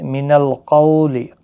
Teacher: قولین ہے، تھوڑا نرمی کے ساتھ آدھی الف کی مقدار کے برابر کھینچ کر پڑھیں